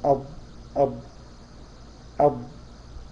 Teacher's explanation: الضاد حافه اللسان، الحيز الذي تشغله الضاد من حافتي اللسان اهو، فتخلي حافه اللسان تضرب في الاضراس العلويه، أض أض أض، بيحصل انك تحول اللسان، تخلي حافه اللسان جنب اللسان يضرب في الاضراس العلويه.